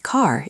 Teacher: at the end of a word like car in American English, it is softer and the tongue curls more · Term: English R